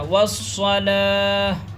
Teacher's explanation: گول تا پر سانس توڑتے ہیں تو یہ تا ہاں میں بدل جاتی ہے